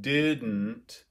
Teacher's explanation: if we're looking at a word like didn't there's a very common syllabic n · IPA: ˈdɪdⁿ.n̩t